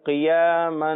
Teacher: کھڑا زبر اسے ایک الف یعنی 2 حرکات کے برابر کھینچ کر پڑھنا ہوتا ہے